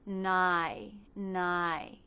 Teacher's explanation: Then for the second half of the diphthong, the tongue tip stays down while the front part of the tongue stretches up towards the front part of the roof of the mouth. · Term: I as in by diphthong